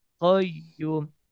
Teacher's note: Ya tasdid, kalau udah bawaannya tasdid, maka dia hanya ditekan bacaannya tapi tidak ditahan atau tidak dipanjangkan.